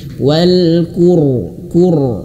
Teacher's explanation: Dan sebelumnya ada huruf yang berharokat qaf yang berharokat dhammah, qur. Maka huruf ro ini sukun dan menjadi tebal.